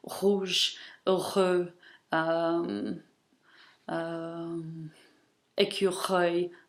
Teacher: in French it's pronounced in the throat, such as in rouge, heureux, écureuil